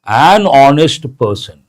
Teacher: A lot of people say honest, but H is silent. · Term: silent or mute H